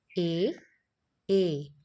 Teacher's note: जब आप ए बोलते हैं तो थोड़ी सी टंग जो है वो हमारी तालू की जगह पर यानी कि जो हमारा तालव्य होता है वहां पर टच होती है और आवाज हमारी कंठ से यानी कि गले से निकलती है। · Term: कंठ तालव्य